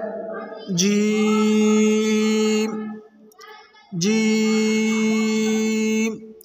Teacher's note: جیم کو زبان کے درمیان اور تالو کے درمیان سے ادا کریں گے